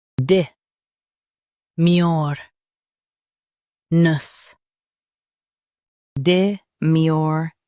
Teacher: Emphasize mur and soften ness.